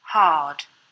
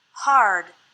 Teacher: the R is pronounced stronger in American English